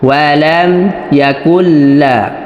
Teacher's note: তো এখানে কাফ এই লামকে এসে ধরবে, লামে তাজদিদ আছে, লামটা দুইবার উচ্চারিত হবে।